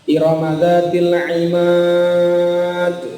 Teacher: Iramadzatil imad, ada pantulannya, huruf dalnya itu. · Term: qalqalah